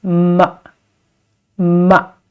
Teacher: this neutral tone that is not stressed is ma. Ma.